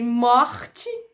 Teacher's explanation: Aí, um pouco mais para trás, lá na úvula, a gente tem os róticos mais marcados e mais puxados, que seria o caso, por exemplo, do R de morte e da vibrante uvular, que envolve a vibração da úvula